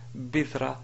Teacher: Donc, cette écriture est fausse parce que ici il s'agit de ta marbuta qui, si on veut s'arrêter sur cette ta marbuta, on prononce bidra au lieu de bidratun ou bidrat. Bidrat, alors là, vraiment, c'est pas correct.